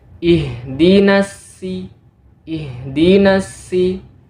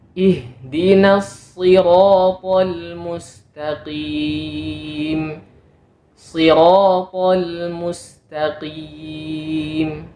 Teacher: harus kita baca dengan sifat tebalnya jangan kita tipiskan seperti Huruf Sin